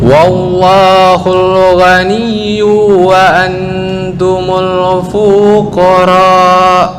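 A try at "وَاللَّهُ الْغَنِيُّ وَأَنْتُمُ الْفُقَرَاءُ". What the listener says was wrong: Oke, yu kepanjangan, fu kepanjangan.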